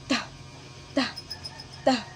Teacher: Sa letrang T, iniipit natin ang ating dila sa ating ngipin kaya tinatawag itong pangipin. At may hangin din na lumalabas pag binibigkas natin ang letrang T